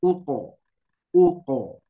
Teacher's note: Nah, huruf qaf tebalkan Bu.